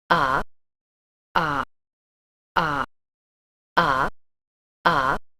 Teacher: the clipped third tone, and it's sort of the equivalent of an unstressed syllable in English